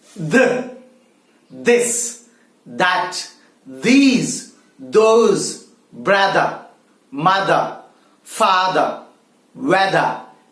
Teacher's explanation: the voiced consonant the you have to slightly bite the tip of the tongue